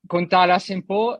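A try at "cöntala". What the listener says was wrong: Sento che lei non fa le O con la dieresi, bisogna farle sentire bene. Contala se.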